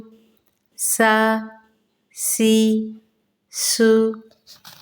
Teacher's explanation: باریکی کے ساتھ سیٹی کی آواز نکالتے ہوئے